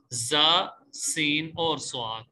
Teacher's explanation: سیٹی والے حروف کا مطلب کیا ہے کہ ان کی ادا کے وقت آواز میں سیٹی پیدا ہوگی.